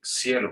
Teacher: Nosotros tenemos el fenómeno invertido que se llama ceseo americano, que es la inversión de todos los fonemas o todos los sonidos sibilantes, S, S, C, Z a la S. Entonces nosotros no decimos cielo, sino que decimos cielo, como con S.